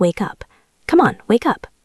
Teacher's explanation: The K sound connects to the ooh. It sounds like wake up.